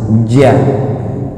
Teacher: di tengah-tengah lidah nempel ke langit-langit atas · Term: jim